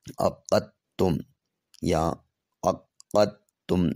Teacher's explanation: دال کا تا میں مکمل طور پہ ادغام ہے